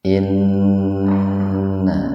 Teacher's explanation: Karena nun bertasdid. Nah, biar terdengar mendengung maka ditahan dua ketukan. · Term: gunnah